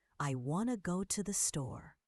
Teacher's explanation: Want to becomes wanna.